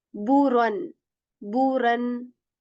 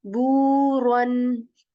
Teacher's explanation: The sound of boo is extended because of waw madda here.